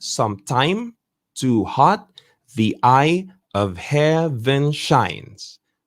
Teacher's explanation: iamb, meaning this unstressed followed by a stressed